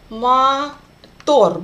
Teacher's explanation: The first O will be read as A. Мотор, because it's unstressed.